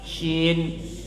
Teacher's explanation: Shin itu tengah lidah naik sedikit.